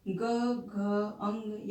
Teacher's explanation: इनके उच्चारण में स्वर तंत्रियों में कंपन होता है या झनकार उत्पन्न होती है और हकार की भी उत्पत्ति होती है, हकार का भी उच्चारण होता है। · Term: सघोष